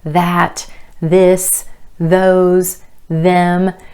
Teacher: since it's voiced you can feel a vibration in your tongue as you make this sound the vibration in your tongue provides a tactile cue meaning something · the voiced TH, your vocal cords are involved and vibrating as you make the sound.